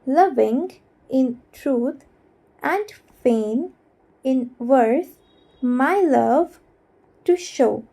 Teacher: तो अगर हम इसे डिवाइड करेंगे आइम्स में तो ऐसा होगा लविंग इन ट्रूथ एंड फेन इन वर्ड्स माई लव टू शो। तो पहला अनस्ट्रेस्ड है, दूसरा वाला थोड़ा हैवी सुनाई दे रहा है, ठीक है। तो ये टाजम टाजम टाजम पैटर्न हो गया। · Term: आयम्बिक हेक्सामीटर